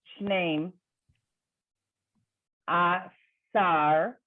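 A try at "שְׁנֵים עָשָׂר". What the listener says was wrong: Perfect. Thank you.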